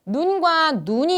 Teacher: 우라는 모음의 길이의 차이 때문에 서로 의미가 갈리게 된 것이구나